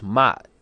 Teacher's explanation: it's a glottal stop, and it's the same as the fifth tone in Mandarin